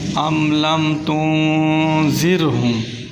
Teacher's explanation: را ساکن اس کا ماقبل مکسور ہے، یعنی اس سے پہلے زیر ہے، اسی وجہ سے را کو بری کر کے پڑھیں گے